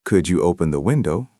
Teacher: with a flat voice, it still sounds a bit cold